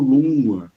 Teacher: Então temos aí Luna que aí gera lua assim nasal, uma nasalidade que eu não sei realizar porque eu não sou falante nativo de regiões do Brasil mesmo em que ainda se mantém essa nazalidade, mas seria algo como lua, né, imperfeitamente realizada eh por mim.